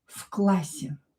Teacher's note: So this V here will be pronounced as F. В классе. Because we have a consonant here followed by another consonant.